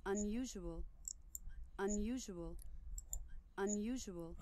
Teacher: Okay, so you've heard these words, this word unusual pronounced, and you see no Y's in the spelling because you have a Y glide inserted, and you also have a W glide inserted.